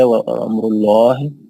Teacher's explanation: لفظ جلالہ لام موٹا کر کے پڑھیں گے